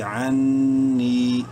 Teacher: عین نون زبر عن، نون مشدد ہے، غنہ کریں گے